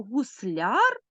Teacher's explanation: наголос у нас падає на суфікс